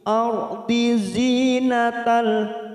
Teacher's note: Ardi zinatal, zi ada kasrah bertemu ya sukun 2 harokat